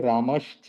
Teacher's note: तो जैसे रामस प्लस च, तो इसका संधि होकर के रामश्च हो जाता है, यानी दंत्य स जो है उसका तालव्य श बन जाता है।